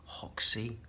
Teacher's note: the Brazilians say Hoxie because they don't pronounce the R